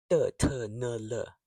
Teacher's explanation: made with the tongue tip.